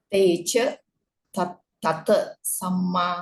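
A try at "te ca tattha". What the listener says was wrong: Not tata. Tata. Double T.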